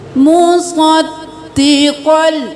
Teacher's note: दाल के ऊपर तशदीद है, दो बार दाल अदा होगा